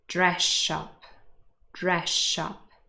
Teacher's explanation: the s in dress changes to sh. Dress shop, dress shop. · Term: assimilation